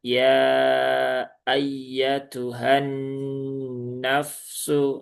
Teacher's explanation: Nah, maka di sini nunnya terjadi idgham ya dari lam ke nun ya sehingga nunnya diberikan tanda tasdid. Nun yang bertasydid itu ada gunahnya maka ditahan dulu tiga harakat. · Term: gunnahnya